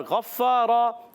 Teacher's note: غین کی ادائیگی حلق کے اوپر والے حصے سے غین موٹا رکھیں گے اور پھر مستعلیہ میں سے ہیں فا مشدد ذرا رک کر